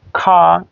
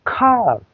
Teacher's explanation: ব্রিটিশরা কিন্তু United kingdom, England, ওরা কিন্তু আর উচ্চারণ করছে না, এবং আমেরিকানরা কিন্তু আর উচ্চারণ করছে